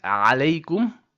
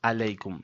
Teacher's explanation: say alaykum starting with the ayn, which comes from the middle throat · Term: Ain